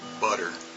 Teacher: correct but when you listen to an American say it's butter the tea has become the soft D sound